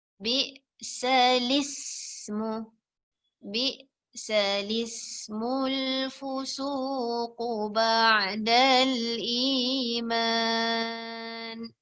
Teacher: dia memindahkan baris alif itu kedepankannya kepada baris lam. Daripada alif dia pergi kepada baris lam.